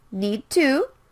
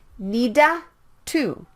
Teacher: you can skip one of the d or t sounds need to or need do don't say it like needa to